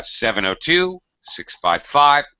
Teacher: it's often common to use the grouping uh 702 655 with a little space kind of an intonation pattern